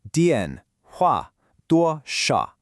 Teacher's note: Pay close attention to those sharp falling fourth tones on 电 and 话.